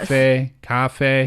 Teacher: And it's the same tone for the first syllable and the second syllable.